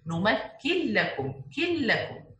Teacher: We skip this noon completely or cancel the pronunciation of this noon completely and pronounce only one لا مشددة. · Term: Merging without غنة